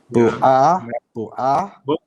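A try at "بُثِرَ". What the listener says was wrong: No, not ah. There's no fatha. If there's fatha, you say ah. Here it's just sukoon. So bur. Bur. Bur. Thira.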